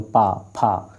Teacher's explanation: आपके ओंठ क्या कर रहे हैं? आपस में टकरा रहे हैं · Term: ओष्ठ